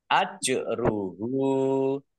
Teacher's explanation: Ajruhu jim sukun juga qalqalah dibaca memantul ditampakkan pantulannya.